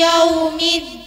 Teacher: Wawu sukun dibaca u bukan o. Dal dengan menahan desisan dari punggung pucuknya lidah. Apabila waqaf bisa 2 atau 4 atau 6 harokat.